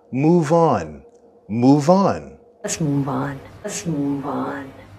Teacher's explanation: Listen for the linking between the two words move and on.